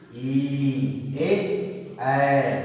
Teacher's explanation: जिन स्वरों का उच्चारण करते समय जीभ का अगला हिस्सा कार्य करता है उसे अग्र स्वर कहते हैं।